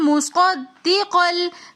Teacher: وآمنوا بما انزلت، مصدقاً کے اندر ہم صاد کو دال کے ساتھ ملا کر پڑھیں گے، کیونکہ دال کے اندر تشدید آ رہی ہے